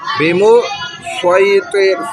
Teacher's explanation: سواد میں آپ کو پتہ ہے کہ تھوڑا سا موٹائی ہے اور اس میں سیٹی والی آواز ہلکی ہے سین کے مقابلے میں. ہے تو حروف صفیریہ میں سین، صاد اور زا، تینوں حروف صفیریہ میں سے سیٹی والے حروف ہیں، لیکن سین میں سیٹی کا عمل دخل زیادہ ہے، سواد میں تھوڑا سا اس کے مقابلے میں کم ہے.